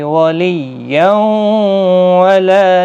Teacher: ادغام مع الغنہ ہوگا، گنہ کے ساتھ پڑھا جائے گا